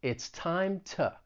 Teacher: Often when I say the preposition to, I'm going to use the schwa and just say to. It's a very weak sound.